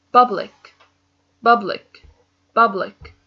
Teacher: The stress is in the beginning.